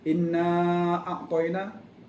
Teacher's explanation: Kalimat inna kena dengung dua harakat, iaitu wajibul gunnah.